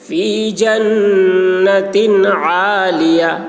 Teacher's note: تنوین ہے یہاں پر اظہار ہوگا، تنوین کو جلد ادا کریں گے